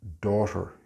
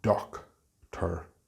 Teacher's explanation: It is not /dok/ /ter. There is no /k/ sound and it has a long vowel sound.